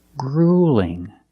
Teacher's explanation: the light L, you don't expand at the bottom of the tongue. You don't raise the back of the tongue. You just make it straight. The tip of the tongue is in the same position.